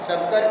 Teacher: शक्कर स का भी उच्चारण तालु से ही होता है। अतः इन्हें तालव्य सकार या तालव्य स कहा जाता है।